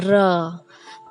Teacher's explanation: इसके उच्चारण में जिह्वा मुड़ जाती है, यानी जीभ जो है मुड़ जाती है, फिर स्वर में कंपन होता है, फिर उसमें कंपन होता है र, तो इसमें एक कंपन होती है।